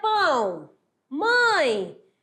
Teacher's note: é um som nasal que o ar quer sair também pelo nariz